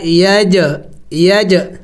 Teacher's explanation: جیم ساکن ہے تو اس کے اوپر میں نے قلقلہ کیا، یعنی میں نے ہلا کے پڑھا